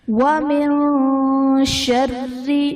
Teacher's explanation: وَمِن شَرِّ، نون ساکن کے بعد حرف اخفا میں سے شین ہے، یہاں پر اخفا کا غنہ کریں گے، را کے نیچے زیر ہے، تو را کو ہم باریک پڑھیں گے